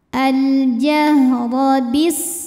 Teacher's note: dibaca dengan jelas alif lam qamariah biasa disebut dengan izhar qamari huruf ro dibunyikan secara tafkhim karena ro berbaris fathah maka cara bacanya ditebalkan pangkal lidah kita naik